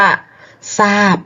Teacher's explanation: ทรเปลี่ยนเป็นซอโซ่ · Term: คำควบไม่แท้